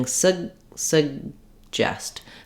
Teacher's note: the first vowel in suggest is going to be very reduced I've written it here as awah and an uh sound but · no vow there at all I'm just doing S Suggest so I'm moving very quickly from the s to the unreleased G sound